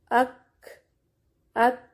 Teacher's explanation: اک، ات، پہلے سختی ہوگی پھر ہمس کی نرمی ہوگی۔